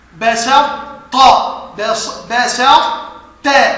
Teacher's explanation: لان بصط بسط ت هكذا فاحنا عندنا نغم الطاء في التاء ادغام ناقص بحيث تذهب الطاء ويبقى صفتها